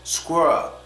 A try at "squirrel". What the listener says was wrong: squirrel. It has to be continuous, because if it's not continuous, you might say it like some of the Germans say it when they say squirrel, squirrel. No, don't stop, keep it moving. Squirrel, squirrel.